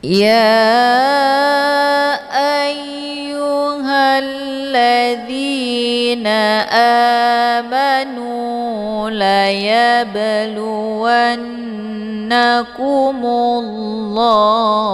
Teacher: Ini dinamakan dengan qalqalaf surah. Cara bacanya, ba-nya dipantulkan dengan pantulan ringan.